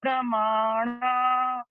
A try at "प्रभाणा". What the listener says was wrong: प्रभाणा, प्रभाणा, प्रभाणा, प्रभाणा, हाँ प्रभाणा, भा है, माँ नहीं हाँ जी, माँ नहीं है। हाँ तो अशुद्ध है।